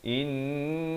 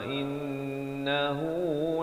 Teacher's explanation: innahu ini tu wajibul ghunnah, wajib dengung 2 harakat